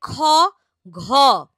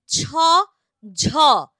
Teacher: মহাপ্রাণ ধ্বনি যেটা বোঝাই যাচ্ছে যে এদের উচ্চারণে প্রাণ বা শ্বাসবায়ু বেশি লাগে